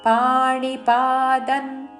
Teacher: అనుస్వారము త వర్గంలోని అనునాసికన్ ఉచ్చారణ